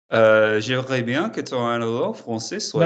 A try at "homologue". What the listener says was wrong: No, not analogue, homologue.